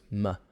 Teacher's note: it's a nasal sound made with the lips kind of blocking the air and the air comes out through the nose